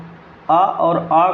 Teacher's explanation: तो इसका उच्चारण स्थान कंठ है। जब हम आ और आ को बोलते हैं तो हमारा उच्चारण स्थान कंठ आता है